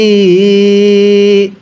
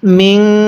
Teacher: এই নুন সাকিনটা আমরা গুন্নাহ করে পড়ব। স্মরণ রাখবেন, নুন সাকিনের পরে যদি ইকফার যে হরফগুলো আছে এই হরফগুলো থেকে কোনো একটি হরফ যদি এই নুন সাকিনের পরে থাকে তাহলে নুন সাকিনটিকে গুন্নাহ করে পড়তে হয়।